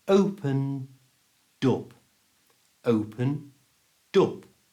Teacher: followed by the word op that begins with a vowel sound we moove that D sound from the end of opened to the front of op so it becomes open dop open dop a little bit faster